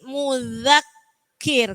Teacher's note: Nah, hati-hati di situ ada zal, ujung lidahnya digigit, mudzakir. Kemudian langsung ditekan di huruf kafnya, mudzakir, mudzakir.